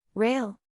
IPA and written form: reɪl (Rail)